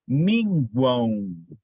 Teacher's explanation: E na palavra minguam, ouçam a palavra, minguam. Percebem que a letra M ela é um nasalizador, obviamente, mas também ela representa a semivogal U. Notem que você diz a palavra U lá no final, minguam, minguam. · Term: tritongo nasal